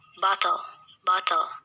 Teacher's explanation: we simply lower the sides of the tongue to release the compressed air rather than raising and lowering the blade of the tongue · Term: lateral